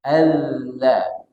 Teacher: huruf dzal ini makhrajnya ini dari ujung lidah bertemu dengan ujung gigi seri atas